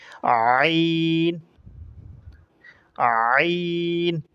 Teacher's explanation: আইনটা কিন্তু কণ্ঠনালীর মাঝখান থেকে কিন্তু উচ্চারণ হবে। এটা কিন্তু একটু চিবে বলতে হবে।